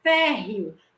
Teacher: O E aqui, ele está fazendo o papel de semivogal e o O de vogal. Então, eu tenho uma semivogal, mas uma vogal de tom crescente. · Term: ditongo crescente